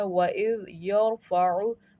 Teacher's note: وَإِذْ يَرْفَعُ، یہ ذال نرم حروف ہے، وَإِذْ يَرْفَعُ، را ہمارا تفخیم ہے، پر کر کے پڑھنا ہے